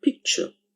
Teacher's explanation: when the sound t is joined or combined with the sound y, we get a new sound like ch